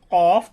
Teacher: তাহলে জিহ্বার গোড়াটা আমাদের মুখের যে অংশটা আছে তার উপরের দিকে জিহ্বার গোড়াটা লেগে যায় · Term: 2 নক্তাওয়ালা কফ